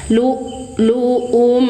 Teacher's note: Izhar syafawi baca jelas mim sukunnya sambil ditunaikan sifat tawasudnya yaitu mengalir sedang suara mim. Lu luum jedah suara ya syiddah